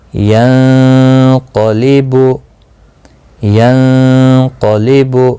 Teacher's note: یہاں پر نون ساکن کے بعد حروف اخفا کا قاف آیا ہے، یہاں پر اخفا حقیقی ہوگا، غنہ بھی کریں گے اور قاف کو پر بھی پڑھا جائے گا